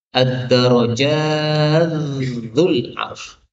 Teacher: taknya hilang, masuk ke dalam dzal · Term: idgham